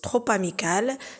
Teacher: Trop amical, c'est une liaison obligatoire entre le P et le A